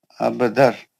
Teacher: और रा आ या आया तो नून की आवाज नहीं आती इगाम बिला गुना है वो नून का आवाज आता ही नहीं